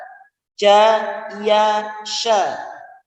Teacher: Caranya adalah tengah lidah ya dikenakan ke langit-langit. Jadi tengah lidah itu diangkat ke langit-langit.